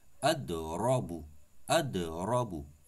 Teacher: Ra prononce sur la bouche remplie